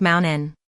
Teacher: With mountain, you'll notice that the t almost disappears and the vowels glide together, making it sound more like mountain n.